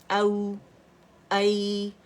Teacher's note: حمزہ اپنی جگہ سے یاد رکھیے گا. اقص الحلق سے فار تھروٹ سے